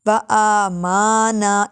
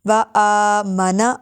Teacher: الف کھڑا زبر کی وجہ سے لمبا کریں گے۔